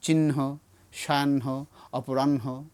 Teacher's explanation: নয়ের সাউন্ডটা মহাপ্রাণ হবে, অর্থাৎ এর সঙ্গে একটা হ সাউন্ড যুক্ত হবে।